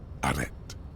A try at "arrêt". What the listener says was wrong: You don't need to pronounce the T. Arrêt.